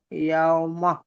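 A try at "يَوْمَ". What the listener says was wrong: ইয়াউমা। ইয়াউমা বলে টানছেন, ঝাটকা দিচ্ছেন কেন? সিম্পল ছেড়ে দিন। ইয়া ওয়াও জবর ইয়াও, মিম জবর মা, ইয়াউমা।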